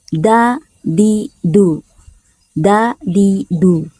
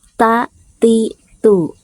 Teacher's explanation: tidak ada hembus angin yang keluar dari dalam mulut